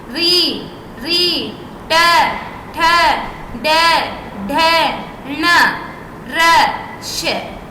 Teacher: मुर्धा में हमारी जीभ थोड़ी सी टर्न मुड़े गी मुड़ने के बाद मेंको सेंटर में जाके मिलेगी देखिए री री